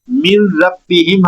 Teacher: جب تنوین یا نون ساکن کے بعد را یا لام میں سے کوئی ایک حرف آئے گا تو پھر ہم نون کی آواز پیدا نہیں کریں گے، اگلے حرف سے ملا کر پڑھیں گے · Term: ادغام تام